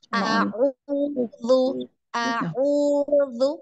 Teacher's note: Nah, baru masuk di ain ya. Ainnya di tengah tenggorokan